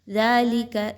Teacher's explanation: دال جو ہے وہ باریک پڑھا جائے گا، موٹا کر کے نہیں پڑھنا یا سختی کے ساتھ نہیں پڑھنا